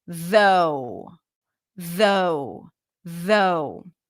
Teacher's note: So the vowel is represented by the OUGH, which represents the O as in go. And the TH is a the sound, a voiced TH.